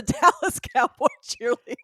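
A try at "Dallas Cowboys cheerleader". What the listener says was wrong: Okay, you're still not pronouncing it right. There's an S. Dallas Cowboys cheerleader. Yes, it's the Dallas Cowboys cheerleader.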